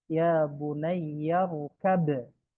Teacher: itu ba-nya masuk ke mim. Ba sukunnya masuk ke mim. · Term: idgham mutajanisen